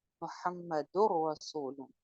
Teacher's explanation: کامل ادغام ہو رہا ہے اور بغیر غنہ کے ادغام ہو رہا ہے